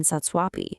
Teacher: The exact same thing happens in satsvapi, merging u and a into a va. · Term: yan sandhi